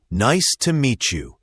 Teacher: meet you often merges to meet you because the t sound and the y sound combine.